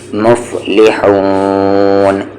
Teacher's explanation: ہا کا مخرج مڈل تھروٹ